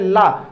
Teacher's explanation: जीभ के साइड से जो वायु है वो सीधे निकल जाती है उसको टच करते हुए उसके बगल से, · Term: पार्श्विक व्यंजन